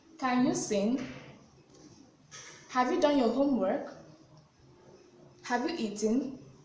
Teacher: You can see that the pitch of my voice rises at the end of each question. So in yes or no questions, the intonation pattern has a rising tone. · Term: rising intonation